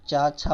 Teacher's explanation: चा छा बोल रहे है तो हमारे तालू को स्पर्श कर रहे हैं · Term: तालव्य वर्ण